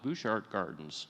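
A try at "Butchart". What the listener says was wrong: It was a limestone quarry. Mr. Butchert, that's the way you pronounce it, even though we want to Frenchify it.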